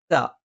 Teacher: ത നാവിന്റെ അറ്റം മേലെ മുൻപല്ലിന്റെ മുരട്ടിൽ